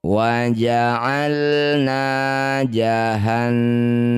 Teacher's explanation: Setiap ada nun atau mim yang bertasydid disebut bacaan namanya gunnah musyaddadah. Bunyi nun didengungkan 2 harokat.